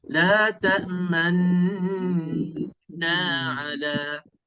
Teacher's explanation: Cara yang kedua, yang mudah sikit, kita dengung dulu 2 rakaat macam wajibul gunnah. Lepas tu hujung-hujung tu kita baru muncul mulut sekejap. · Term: ismam